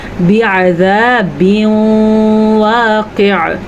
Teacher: तनवीन के बाद वाओ आ गया है तो यहाँ पे गुन्ना होगा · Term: इदगाम बिल गुन्ना